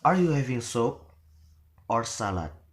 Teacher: So are you having soup? So it is rising, then or salad, then falling. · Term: rise to fall intonation